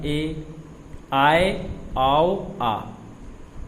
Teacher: आधा मुख खुलेगा, ए, आए, आओ, आ, ये अर्धविव्रत में आते हैं